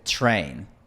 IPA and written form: 'tʃɹeɪn (train)